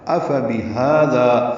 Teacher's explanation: حمزہ فا اور با جلدی ادا کریں گے، اقصی حلق سے حمزہ ادا ہوتا ہے بالجہر · ہا وسط حلق سے ادا ہوگا